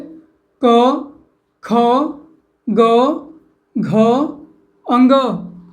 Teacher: उच्चारण करते समय हमारी जीभ का पिछला हिस्सा हमारे कंठ को छूता है उनको कंठी व्यंजन कहते हैं